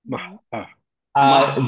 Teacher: হা always light, ওকে, কখনোই heavy হবে না